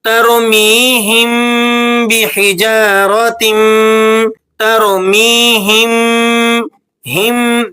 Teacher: ترمیہم بحجارۃ، ترمیہم، ہم، دیکھیں ایک درمیان کی کیفیت ہے، آواز میم کی چھپ بھی نہیں رہی مکمل اور مکمل طور پر واضح بھی نہیں ہو رہی، اس درمیانی کیفیت کو اخفاء شفوی کہا جاتا ہے۔